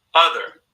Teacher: you're adding rhoticity to this schwa sound, so it becomes more like as in other, Now, in some accents, when this R-ness gets dropped, other, that becomes a non-rhotic accent.